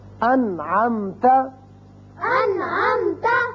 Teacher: نون ساکن کے بعد عین آ گیا، نون پر ہم نے اظہار کیا، نون کو ظاہر کر کے پڑھا